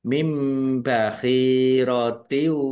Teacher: Nun sukun bertemu dengan huruf ba, bacaan iklab dibaca membalik, nunnya dibaca mim ya. Ditandai ada mim kecil berdiri mim bakhirotiu wa.